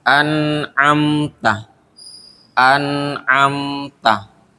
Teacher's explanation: nun mati bertemu Ain maka bacanya itu dibaca jelas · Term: izhar